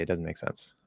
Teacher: an ordinary guy again why in the words doesn't or wasn't the Z often is not pronounced in fast speech